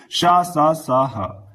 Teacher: ऊष्मीय व्यंजन की बात कर लेते हैं। इनके उच्चारण में हवा मुख से घर्षण के साथ निकलती है, ऊष्मीय व्यंजन कहलाते हैं।